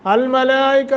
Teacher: मद्द मुत्तसिल है, इसको लंबा करेंगे 1 अलिफ 2 अलिफ 2.5 अलिफ 3 अलिफ 4 अलिफ 5 अलिफ तक